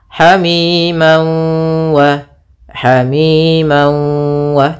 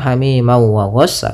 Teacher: masukkan tanwinnya ke waw sambil ditahan gunnahnya 2 harakat. Hamiman wa, hamiman wa, tidak langsung hamiman wa ghassa, tapi tahan dulu. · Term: idgham bi gunnah